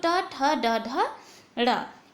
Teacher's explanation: देखिए मूर्धन्य ध्वनियां कौन सी होती हैं? तो टवर्ग, टवर्ग का जो उच्चारण स्थान होता है वो मूर्धा से होता है, यानी कि मूर्धन्य ध्वनियां होती हैं